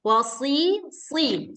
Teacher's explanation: Kayak kita mengucapkan huruf sin. Cuman dia ini agak tebal. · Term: sod